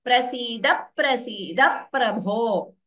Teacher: Everywhere p is doubling. Very clearly dvitvam is heard here.